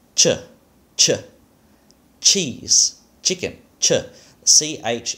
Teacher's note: the voiceless aspirated palato-alveolar affricate is ch, ch, cheese, chicken, ch, ch in English, which we're going to call in this situation the mid ch.